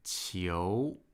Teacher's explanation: So 球 with a second tone, that's a rising tone.